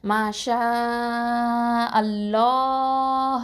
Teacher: அப்போது இதை என்ன பண்ணணும், அல்லாஹ் அப்படின்னு சொல்லும் போது அதுக்கு முன்னாடி உள்ள எழுத்து வந்து ஃபத்தா பெற்று வந்துச்சு அப்படின்னு சொன்னால் அந்த அல்லாஹ்ங்கிற வார்த்தையை என்ன பண்ணுவோன்னா நல்லா தஃப்ஹைமாக உச்சரிப்போம்